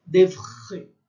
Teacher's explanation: É um R sentido aqui na garganta que a gente não faz, né? A gente fala porta, é bem aqui em cima, né?